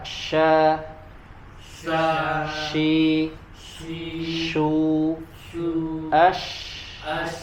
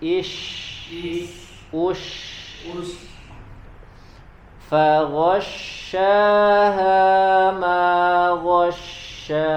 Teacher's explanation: Huruf shin dan ya sama-sama tidak ditempelkan bagian tengah lidahnya ke langit-langit bagian atas ya, hanya dia mendekat ataupun mengarah ke langit-langit atau mendekat ke langit-langit bagian atas, langit-langit mulut.